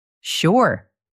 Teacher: A rising upward inflection helps it sound warm and positive.